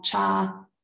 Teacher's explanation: High tone on a long vowel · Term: Rising tone